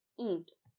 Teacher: तो यहाँ पर जो ईंट शब्द है, यहाँ पर ई के ऊपर भी ये जो है वो चंद्र बिंदु ही लगी हुई है, क्योंकि इसे उच्चारित करने में हमारी नाक पर भी हवा का दबाव पड़ रहा है।